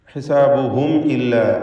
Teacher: സക്കിനത്ത് മീമും ശേഷം ഹംസയും ഇൽഹാർ ഷഫവി നൽകി മീമിനെ വെളിവാക്കണം, മണിക്കാതെ ഉച്ചരിക്കണം